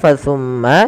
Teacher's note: ada bacaan yang kita namakan dengan bacaan gunah yaitu suara mimnya kita kita tahan